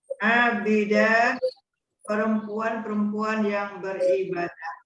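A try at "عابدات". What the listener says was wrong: Untuk yang terakhir nggak dibaca abidah, Bu. Abidat.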